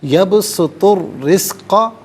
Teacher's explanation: الرزق، یبسطو میں تو پر پیش ہے، اسے الرزق کے را کے ساتھ ملائیں گے، اور درمیان میں سے الف یعنی حمزہ کو حذف کریں گے۔ را حرف شمسیہ ہے تو یہاں پر را کا ساؤنڈ ہوگا، لام کا ساؤنڈ نہیں ہوگا۔ یبسط الرزق، را کے نیچے زیر ہے، باریک کر کے پڑھیں گے۔